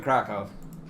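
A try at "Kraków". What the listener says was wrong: I forget the W's are like pronounced like B's.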